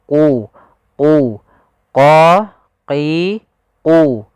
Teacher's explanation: membacanya agak tebal untuk membedakan antara huruf q dengan huruf Kaf huruf q pangkal lidah kita harus kita angkat